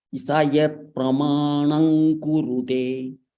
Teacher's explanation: Here there is anuswara followed by kakara. Ing will come.